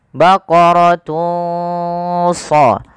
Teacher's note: Maka masukkan di sini, samarkan suara tanwinnya kepada huruf shad